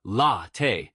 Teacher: For latte, stress the first syllable